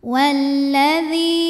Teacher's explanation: alif lam menghadapi huruf Syamsiah yaitu huruf lam cara bacanya dimasukkan ke lam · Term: alif lam syamsiah